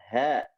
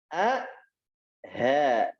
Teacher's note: asal kena di pangkal tenggorokan, itu makhraj huruf H. Bukan sampai di dada.